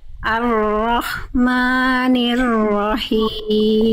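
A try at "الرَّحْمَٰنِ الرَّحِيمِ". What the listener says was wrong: Oke, tinggal diperlembut sedikit. Jadi haknya itu udah bagus jadi hak kecil ya. Cuman masih agak masuk ke kho sedikit, jadi ada kasar-kasarnya sedikit. Jangan ada keresak-keresaknya. Ar-Rahmanir-Rahim. Berbisik, lembut, clear. Jangan ada jangan ada keresak-keresaknya. Ar-Rahman.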